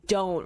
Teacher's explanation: d and t sound that kind of bookend that word are so sharp. They're stops